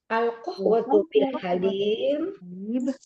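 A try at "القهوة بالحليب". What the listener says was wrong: Bukan halim, tapi halib. Al-qahwata bil halib. Naam, al-qahwata bil halib.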